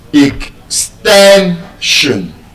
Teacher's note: If you look at the way you are pronouncing the word ex- ten- shun The last syllable is s i o n. And so, the stress will be on the second to the last syllable, which is the ten. ex- ten- shun And so, when you speak your voice your voice should reflect that stress.